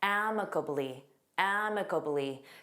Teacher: Notice that syllable stress on the first syllable.